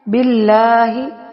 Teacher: اللہ کے لام سے پہلے زیر ہے تو اس کو نرم پڑھیں گے، باریک پڑھیں گے۔